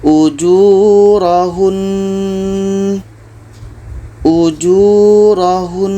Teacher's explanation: nun tasydid ini tetap kita dengungkan ketika berhenti.